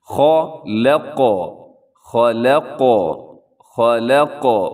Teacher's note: قاف کو ہلانا ضروری ہے، کیونکہ قاف کا قلقلہ جو ہوتا ہے یہ واجب ہوتا ہے، ضروری ہوتا ہے، اس کو ہلانا جب اس کے اوپر جزم ہوتی ہے تب۔ · یہاں خا موٹا پڑھا جائے گا، لام باریک ہے، قوف موٹا بھی ہے اور قلقلہ بھی کرنا ہے آپ نے۔